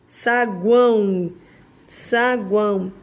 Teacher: saguão termina em Ó mas tem som de u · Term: tritongo